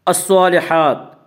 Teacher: صاد کو پر پڑھیں گے، صاد حروف مستعلیہ میں سے ہے